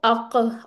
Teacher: अक और मुंह गोल नहीं करना। होठ गोल नहीं करना। · आपकी जुबान की जो जड़ है वो ऊपर की तरफ उठ जाएगी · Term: काफ